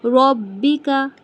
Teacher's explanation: ربکا، رو کو موٹا با کو جما کے، ربکا، رو کو موٹا کیوں؟ کیونکہ رو کے اوپر زبر ہے